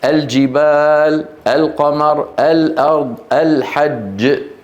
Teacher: يظهرون اللام وذلك لبعد مخرج اللام عن مخارج تلك الحروف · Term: اللام القمريه